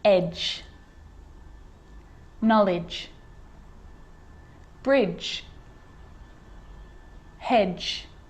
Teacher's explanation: And a D can be very quiet, not quite silent, but very quiet in front of a G, like in these examples.